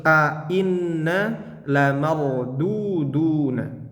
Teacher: Ainna itu dua hamzah. Bacanya harus sama-sama jelas. Jangan satunya ain ainna ainna harus ainna lamarduduna.